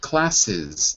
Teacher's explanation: the final S is pronounced like an extra syllable